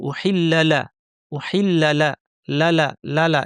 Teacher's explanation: যদি টান না থাকে, তাহলে পরের শব্দের প্রথম অক্ষর লাতে এমনভাবে চলে যেতে হবে যেন দুটা একই শব্দে ছিল। উহিল্লালা, উহিল্লালা, লালা, লালা, এভাবে চলে যেতে হবে।